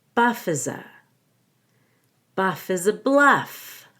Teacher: I go up on Bluff because I'm not done with the sentence